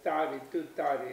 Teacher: So if you say it properly, ta, there'll be hardly any breath will come out of your mouth when you say it. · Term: unaspirated T